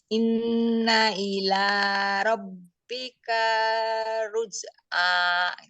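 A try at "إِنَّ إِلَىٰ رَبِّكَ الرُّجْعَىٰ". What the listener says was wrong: Tasdid langsung rabbikar. Katanya idgham. Idgham kan langsung ditasdidkan.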